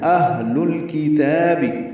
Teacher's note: حمزہ اقصی حلق سے، ہا اقصی حلق سے نکالیں گے